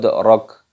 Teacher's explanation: dibaca qalqalah, dipantulkan suaranya.